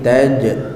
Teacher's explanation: huruf jim dia tak boleh ada apa? Angin. Okey, dia tak boleh ada angin.